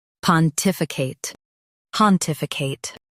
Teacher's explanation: In US, stress tif. In UK, stress tif and soften I.